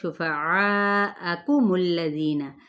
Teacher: جب یہ عین کے بعد الف آ رہا ہے، اس کو 4 حرکت کھینچے